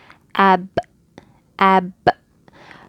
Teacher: So you kind of push a lot of force after you close your lip and then bring them apart. And you can hear the qalqala.